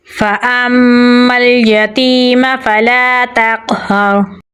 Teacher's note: ता को बारीक पढ़ेंगे और क़ाफ़ के साथ मिलाएंगे। क़ाफ़ को पुर यानी मोटा पढ़ेंगे। यहाँ पर क़लक़ला हो रहा है तो यहाँ पर हम क़लक़ला करेंगे लेकिन कमज़ोर क़लक़ला होगा। हा को गले के दरमियान वाले हिस्से से निकालेंगे और रा के साथ मिलाएंगे क्योंकि रा के ऊपर जज़म है। · हा को गले के दरमियान वाले हिस्से से निकालेंगे और रा के साथ मिलाएंगे क्योंकि रा के ऊपर जज़म है। रा को पुर यानी मोटा पढ़ेंगे क्योंकि इसके पिछले हरफ पर ज़बर है